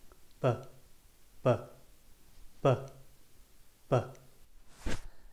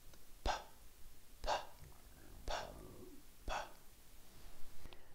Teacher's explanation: The sound is very similar, but the physical shape of the mouth is almost exactly the same. The only difference is B is voiced, which means that we use our vocal cords to produce the sound. If you feel your neck when you say the sound, you should feel some vibration.